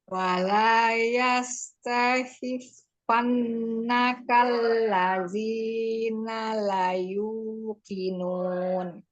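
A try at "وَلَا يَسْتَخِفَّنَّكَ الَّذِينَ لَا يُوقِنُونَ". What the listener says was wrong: La-nya mad. La yuqinun.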